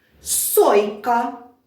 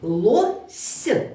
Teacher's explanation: М'який приголосний с стоїть в кінці